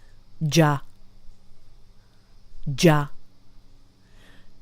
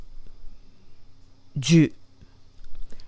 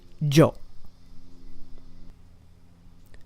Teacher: we lose that y sound because ji with a little ya actually just becomes ja